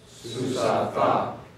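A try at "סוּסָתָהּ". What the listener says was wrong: I heard some of you give a little bit more of the ha sound there at the end. Susatha.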